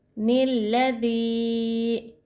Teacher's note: यहाँ पर इदगाम यरमलून का क़ायदा हो रहा है, यहाँ पर गुन्ना नहीं करना चाहिए। निल्लज़ी, नून को हम तशदीद से मिला रहे हैं